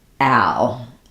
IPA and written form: æl (al)